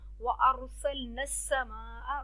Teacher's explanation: व अरसलना समा, रॉ को मोटा पढ़ेंगे, रॉ से पहले ज़बर है, सीन पे सिटी की आवाज़ आएगी. माँ को लंबा करेंगे, बड़ी मद है, 5 अलिफ तक लंबा होगा.